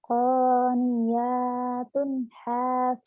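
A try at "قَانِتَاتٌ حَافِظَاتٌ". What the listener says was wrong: Qanitatun, Itu ta, titiknya di atas. Qanitatun hafizatun.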